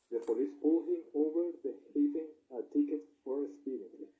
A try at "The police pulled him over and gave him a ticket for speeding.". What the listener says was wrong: Gave. Esta G es bastante marcada. No la pronuncias como una H. Es gave, no gave. Gave. Bastante marcada.